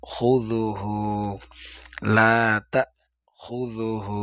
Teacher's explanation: আল হাইয়ুল কাইয়ুম লাতাহু জালের উচ্চারণ খুজুহু বললে হবে না কারণ এখানে জালটা জিহবার আগা থেকে হবে